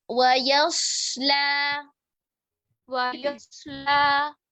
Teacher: या को मोटा नहीं करेंगे, सौत को मोटा करेंगे